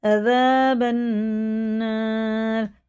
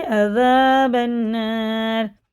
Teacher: یہ الف نہیں پڑھا جائے گا، یہ الف لام نہیں پڑھے جائیں گے ، ٹھیک ہے نا، با سیدھا نون میں لگا کے عذاب